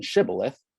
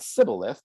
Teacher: the gileadite rendering includes an aspirated s as in shibboleth whereas the ephraimite sybileth does not